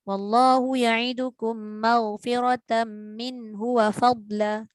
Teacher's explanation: Dengung tapi tak cukup panjang.